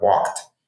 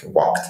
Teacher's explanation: you have to modify that sound at the end to be this hard T like walked instead of this softer D like walked right and